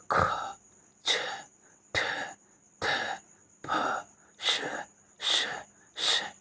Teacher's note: इसमें देखिए सब में जो है कानाफूसी वाली आवाज़ आती है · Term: महाप्राण